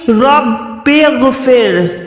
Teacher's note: یہ والی را پتلی ہوتی ہے، اب یہاں پر آپ نے منہ کو گولائی نہیں کرنا، اس کو ڈائریکٹ پڑھنا ہے رب اغفر۔